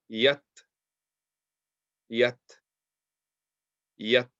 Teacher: We're just pronouncing the sound of the ta with no movement after it.